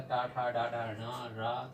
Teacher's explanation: ट वर्ग के पांचों अक्षर टा ठा डा डा ण रा तथा शा का उच्चारण स्थान होता है मूर्धा